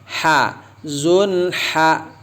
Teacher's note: Ha keluar dari mana tuh ha? Dari tenggorokan bagian tengah ya. Temannya dengan a, ha.